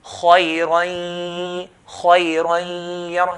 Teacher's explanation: When we pronounce the ya, we have to pronounce it with a nasalization sound that comes from the nose. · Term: ghunna